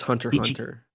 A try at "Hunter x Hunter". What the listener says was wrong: You don't pronounce the X. It's like a my understanding is it's like a dot in like an acronym.